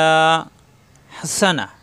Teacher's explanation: সিন যাবর সা, শক্ত, জিব্বা নিচে দাঁতে